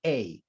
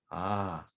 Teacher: it is an a in circassian it's not a it's ah there's no hard start to it it's a soft start